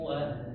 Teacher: karena huruf ini adalah huruf wau maka dimonyokkan bibirnya